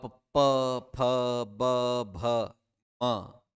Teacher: आपके होठ मिल रहे हैं केवल, न जीवा हिल रही है न कुछ और हो रहा है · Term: ओष्ठ